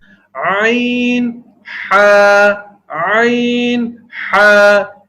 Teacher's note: یہ حروف وسط حلق یعنی حلق کے درمیانی حصے سے ادا ہوتے ہیں. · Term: حروف حلقی